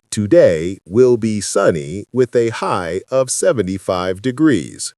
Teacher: First trap, flat intonation. Your voice stays at the same pitch level the entire time. Think about a weather forecast robot.